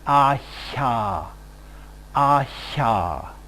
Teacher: If we have a narrowing in the roof of the mouth, that is in the palatal region, we get something like ahya, ahya.